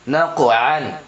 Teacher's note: قاف میں قلقلہ ہوگا کیونکہ قاف حرف قلقلہ میں سے آ رہا ہے اور قاف کے اوپر جزم بھی ہے